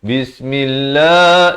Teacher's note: Bismillah, lafaz jalalah dibaca nipis. Jangan baca Bismillah, itu tebal.